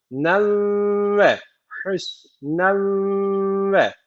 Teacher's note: n'yi gunne bir şekilde ve vava katacağız